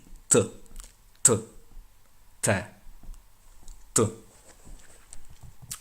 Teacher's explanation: it comes from a little bit further back in the throat, and there isn't a big puff of air. It's not an aspirated letter, a bit like P and a bit like K.